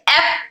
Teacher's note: इन हरूफ में सिफत हम्स भी है जिसकी वजह से एयर फ्लो यानी सांस जारी कंटिन्यू है। इसी के साथ साथ इस हर्फ में सिफत रखावा भी है जिसकी वजह से आवाज नरम होकर हर्फ के साथ जारी है।